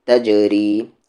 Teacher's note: جیم پر قلقلہ کریں گے، را کو لائٹ کریں گے